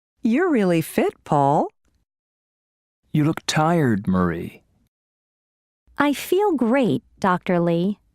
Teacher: with direct address there is usually falling intonation and a pause before the name